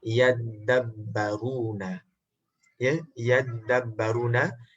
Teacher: single ta, tapi tak single dal, cuma dal itu bertasydid dan ta tidak lagi ada kerana ada bentuk idgham, iaitu ta terpaksa dimasukkan ke dalam huruf dal pada bunyinya. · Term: dal yang bertasydid